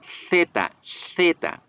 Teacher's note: la Z española se produce haciendo que la punta de la lengua quede en la mitad de los dos dientes, superior e inferior.